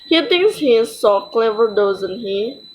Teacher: them really ex for confirmation or invite agreement in which case we use a falling tone at the end